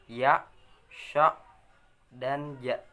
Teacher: tengah lisan dengan langit-langit atas, keluar darinya huruf ya, sya, dan ja